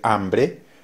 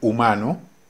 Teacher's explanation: para los que hablamos nosotros quienes hablamos español el sonido de la h es silencio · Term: sonido silencioso